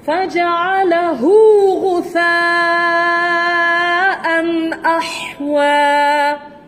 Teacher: Hu tu maksilah saghirah, tidak panjang.